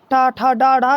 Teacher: जो हमारे जीभ का जो आगे भाग है वह हमारे तालु से मुड़ के लगता है और एकदम जब छोड़ता है तो वह मूर्धा कहलाता है। जैसे ठा ठा डा ढा ये सब मूर्धन वर्ड हैं।